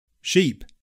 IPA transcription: ʃip